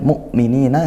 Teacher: Nah, ini ada al bertemu huruf mim, yaitu izhar qamariyah. Kemudian mu'minina hamzah sukun diperhatikan, ditekan ya, tidak ngalir.